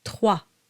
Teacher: Trois has a W sound to it, and you go straight to the A sound.